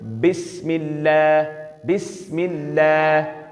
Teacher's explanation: جب دونوں ہونٹ ملیں گے تو با کی آواز نکلے گی. دونوں ہونٹوں کے تر حصے ملیں گے نہیں تو با کبھی بھی نکلے گی.